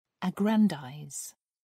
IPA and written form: ˈæɡrənˌdaɪz (aggrandize)